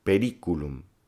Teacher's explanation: Por ejemplo, en la palabra periculum, la vocal tónica es la I, periculum.